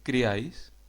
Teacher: se trataría de una palabra monosílaba en la que se produce la combinación de una vocal cerrada más una vocal abierta más una vocal cerrada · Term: triptongo